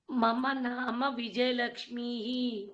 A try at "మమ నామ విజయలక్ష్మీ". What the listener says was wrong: లక్ష్మీహి correct అండి ప్రస్తుతం లక్ష్మీ అని దీర్ఘం చెప్పి ఆపేయండి